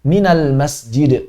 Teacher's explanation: karena sifat qolqolah pada huruf Dal itu lazim otomatis keluar qalqalahnya